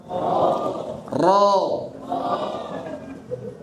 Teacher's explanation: Dan usahakan huruf ro-nya ini bisa tebal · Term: ro tafkhim